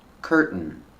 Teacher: Curtain where you make the stop t and it falls to an n.